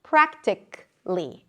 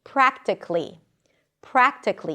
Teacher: It ends with a k sound and then -ly.